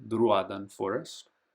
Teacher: you have the accent, so you make that vowel a little longer